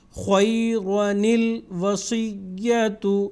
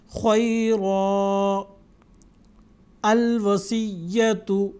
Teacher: دو الفاظ کے جوڑ کر پڑھنے کی صورت میں ہی نون قطنی پڑھا جائے گا اور الف نہیں۔ اگر الگ الگ کرتے ہیں تو الف پڑھا جائے گا، نون قطنی نہیں پڑھا جائے گا